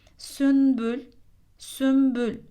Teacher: ifâ 1010 deliği cezimli gelen nun harfinden sonra baba harfi geldiğinde cezimli nun harfi Mim harfine dönüştürülerek okunur